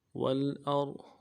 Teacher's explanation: واو کو لام کے ساتھ ملانا ہے ، اور حمزہ کو غا کے ساتھ ملانا ہے، موٹا ادا